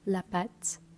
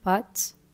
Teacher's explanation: Moi, je vais le prononcer très ouvert, la pâte. D'autres le prononceront de manière plus fermée, pâte.